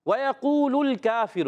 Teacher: وَيَقُولُ الْكَافِرُ، واو پر زبر ہے، واو کو نہیں کھینچنا مگر واو دونوں ہونٹوں کی گولائی سے ادا کریں